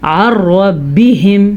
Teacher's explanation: اس میں سے نون ختم ہو جائے گا اور عین کے ساتھ را کو جوڑ دیا جائے گا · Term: ادغام بلا غنہ